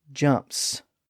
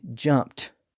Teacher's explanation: English English follows the voicing at the end of those words if the verb ends in a voiceless sound like the P sound and jump then the suffix is also voiceless either an S sound or a t- sound so we say